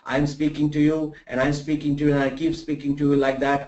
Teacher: I don't modulate my voice. I don't take it up. I don't take it down. I just keep it at that pitch. I don't have no modulation and I keep talking to you like this throughout the next 1 hour. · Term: monotone